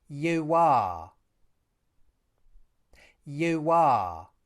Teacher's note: This /w/ sound is really just the end of the /uː/ vowel.